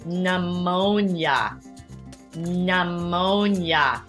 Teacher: We do not pronounce that initial P.